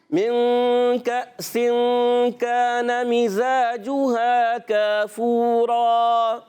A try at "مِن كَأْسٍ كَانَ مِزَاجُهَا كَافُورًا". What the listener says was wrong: من کأس 2 جگہ غنہ ہے، ٹھیک ہے نا, ادھر سے آواز آئی, غنہ چھوڑ دیا, تو آپ نے غنہ پورا کرنا ہے.